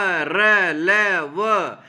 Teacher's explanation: इनका उच्चारण जीभ, तालु, दांत और होष्ठों के परस्पर सटने से होता है, किंतु कहीं भी पूर्ण स्पर्श नहीं होता है। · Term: अंतःस्थथ व्यंजन